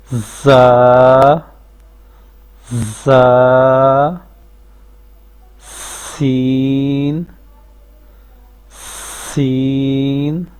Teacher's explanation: زبان جو ہے آگے سے اٹھی ہوئی ہے، پیچھے سے زبان نیچے ہے۔